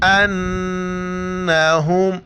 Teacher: میم پر شد او یا نون پر شد او، وہاں پر ہمیں غنہ کرنا ہے یعنی ناک میں آواز چھپانی ہے